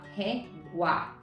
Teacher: primeiro uma semivogal, que foi o U, e depois nós tivemos uma vogal, que foi o A